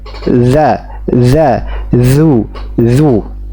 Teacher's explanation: Lidah disebut dengan al-lisan ya dalam istilah tajwid, yaitu dari punggung ujung lidah bertemu dengan paling ujung dua gigi seri atas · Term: huruf zal